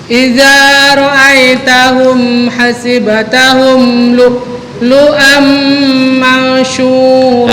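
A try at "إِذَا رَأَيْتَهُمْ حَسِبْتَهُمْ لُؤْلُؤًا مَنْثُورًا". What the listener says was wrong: Nah, bukan mansyu tapi mansura. Bukan syu tapi thu. Ujung lidah dengan gigi atas.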